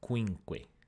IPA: kʷi:ŋkʷe